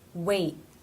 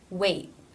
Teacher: An example for this is the word wait, wait, where the tongue moves up into position for the T, but then does not release. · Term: T as a stop